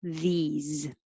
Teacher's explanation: Tongue should go very high for E, and then forward again for the Z, these. Keep your sound on, these.